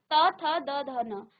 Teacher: त वर्ग का उच्चारण आपके दांतों से, आपकी जीभ आपके दांतों को स्पर्श करेगी, इसलिए इसे हम दंत्य कहते हैं।